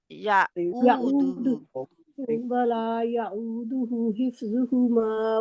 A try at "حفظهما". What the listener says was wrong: okay, حف نہیں ہے، فا کے مخرج میں رہنا،